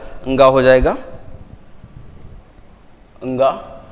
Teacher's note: कंठ से बोला जाएगा, और कंठ के साथ साथ नासिका से, यानी कि अंगा का उच्चारण स्थान कंठ प्लस नासिका हो जाएगा।